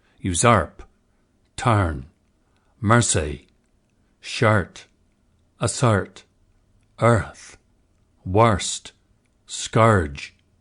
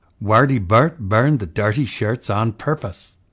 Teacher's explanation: Crystal additionally asks for a slightly different vowel shape for the nurse set, slightly more open.